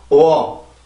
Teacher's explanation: 전혀 성대에 긴장이 안 들어가 있죠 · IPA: ɔr